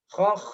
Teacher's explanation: Jadi ada mengalirnya di huruf kho yang bertanda sukun